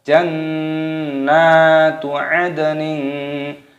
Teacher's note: ad tersukun qalqalah, pantulkan suaranya